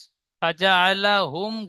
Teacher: গুন্না হবে না, বিনা গুন্নায় পড়বেন।